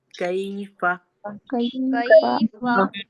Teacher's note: फिर हम काफ की अदायगी करेंगे, कैफा, कैफा काफ और फा का मखरिज समझ में आया, हमारी जबान की जड़ ऊपर के सख्त तालू से लगी